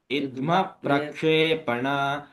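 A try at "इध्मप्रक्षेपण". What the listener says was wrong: इद्मा महाप्राण है। धुआं में महाप्राण नहीं आ रहा है आपको, धुआं में महाप्राण आनी चाहिए।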